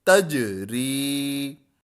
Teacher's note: یہاں پر حروف قلقلہ ساکن ہے، یہاں قلقلہ کرنا ہے، اور را یا زیر ری یہ حروف مدہ ہے، یا جو ہے وہ یا مدہ ہے، تو یا کو ہم کھینچیں گے